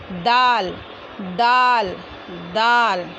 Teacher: ज़बान की नोक और सामने के ऊपर वाले दो दांतों की जड़ से, जहाँ से ता अदा होता है वहीं से दाल अदा होगा। दोनों का मखरज एक ही है, दोनों मुंह के एक ही हिस्से से अदा होता है।